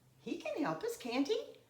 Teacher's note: So my intonation in the tag rises to get the point across